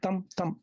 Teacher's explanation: Spondee meaning a foot of two syllables, but both of them stressed.